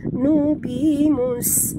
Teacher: bunyikan safir pada sin yang mati